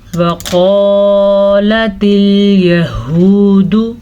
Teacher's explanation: क़ाफ को मोटा करके पढ़ेंगे क्योंकि क़ाफ मोटी पढ़ी जाती है। यहूदु, हा के तलफ़्फ़ुज़ का ध्यान रखना है।